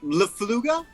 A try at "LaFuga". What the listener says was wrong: Without the L.